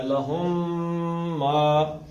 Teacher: لہم کے میم اور ما کے میم کو آپس میں ملا کے پڑھنا ہے